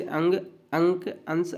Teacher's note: अनुस्वार के उच्चारण में नाक से अधिक सांस निकलती है मुख से कम